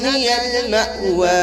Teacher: میم کو جھٹکا مار کے پڑھا جائے گا کیونکہ اس کے بعد حمزہ آ گیا ہے